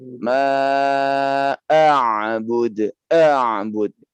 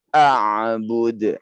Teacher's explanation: Keras saja kasar. Karena hamzah ini jika dia disukunkan bunyinya adalah a ya. Yaitu suara yang kasar ya keluar dari mulut kita. Pada saat dia tidak disukunkan pun juga masih terasa kasarnya.